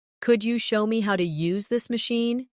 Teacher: Could you becomes could ya in casual rhythm.